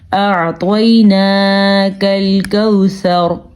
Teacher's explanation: طوا جو ہے وہ پر پڑا جائے گا کیونکہ طوا حروف مستعلیہ میں سے ہے